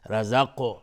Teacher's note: و من رزقناه، نون ساکن بعدش را، ادغام بدون غنه و را مفخم هست، استعلاست حکمش چون فتحه داره. رزق و قاف قلقله میخواد چون ساکنه. رزقناه منا، نون مشدد 2 حرکت غنه میدیم.